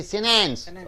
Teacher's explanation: After the NT comes, you don't bother about the T. You say sentence.